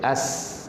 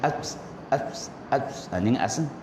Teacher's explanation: terlepas suara ketika menyebut huruf ini kerana dia lemah berpegang pada makhraj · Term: rokhawah